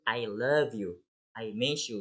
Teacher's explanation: we will stress the word of love and miss